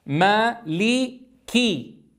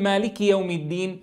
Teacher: أيها الأحبة نتنبه إلى إتمام كسر الكاف